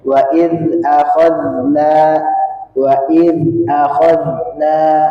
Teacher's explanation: Jadi kayak seperti zai tapi dia ee agak bergetar sedikit ujung lidahnya.